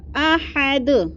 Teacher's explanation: دو پیش تنوین کو جب وقف کریں گے تو ہم یہ تنوین نہیں پڑھیں گے بلکہ ساکن کر کے پڑھیں گے